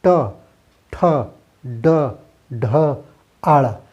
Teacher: इसमें देखिए होता ये है कि जो हमारी जीभ है यह हमारे मूर्धा यानी ये तालु से जस्ट पीछे ऊपर साइड में टच करती है, और हमारी जीभ मुड़ी हुई रहती है, ये मूर्धन्य वर्ण होता है